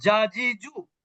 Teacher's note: জিমটা শক্ত হবে জিহ্বার মধ্যভাগ থেকে